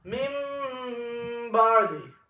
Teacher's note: After Nun Sakin comes the letter Ba. Then we change the Nun Sakin and read it as Mim Sakin. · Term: Iqlab